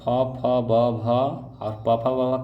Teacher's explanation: प, फ, ब कहाँ से आता है? ओठ से आता है।